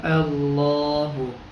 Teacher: ٹھیک ہے، یہ حمزہ لام زبر ال، لام کھڑا زبر لا، اللہ ہا پیش ہو اللہ۔ تو اب یہ زبر ہے لام سے پہلے، تو ہم اس لیے لفظ اللہ کو موٹا پڑھیں گے، تو یہ بن جائے گا اللہ۔